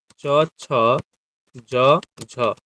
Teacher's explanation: চ ছ জ ঝ এদের উচ্চারণ স্থান তালু